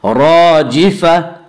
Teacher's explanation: گول تا وقف کی صورت میں ہائے ساکنہ بن جاتی ہے